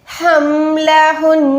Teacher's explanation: साकिन के साथ शद्द की वजह से हमने नून को लंबा करना है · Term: गुन्ना